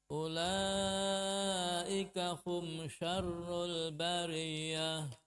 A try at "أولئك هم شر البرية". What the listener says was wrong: Nah, ra di sini ditekan lagi karena dia bertasydid. Kemudian ya tasydid itu harus ditekan ya supaya tidak sama dengan ghunnah ataupun dikhawatirkan menjadi ghunnah. Contohnya ulaika hum syarrul bariyah. Bariyah.